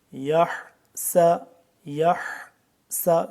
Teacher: سین سیٹی کے بعد حا صحیح کر کے گلے سے نکلے گا